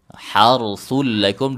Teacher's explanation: Harsul lakum dibaca tebal, huruf ra sukun sebelumnya do, sebelumnya fathah ya.